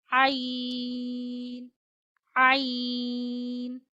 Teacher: आइन आइन गले के दरमियान से अदा होता है